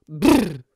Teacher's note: le BR sur lequel s'échauffent volontiers les mêmes chanteurs est une roulée bilabiale